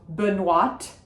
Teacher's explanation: we do say the T at the end of Benoîte because there is an E